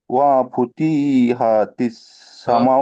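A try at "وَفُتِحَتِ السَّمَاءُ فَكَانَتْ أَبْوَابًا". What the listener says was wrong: প্রতি, এখানে তাজের তি হারাকাত আছে ভাই, হারাকাতকে টান দিচ্ছেন। ওফুতিহাতিস সামা, কোনো টান হবে না, সবগুলো হারাকাত। ওফুতিহাতিস সামা।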